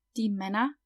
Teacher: we pronounce the ER at the end kind of like an A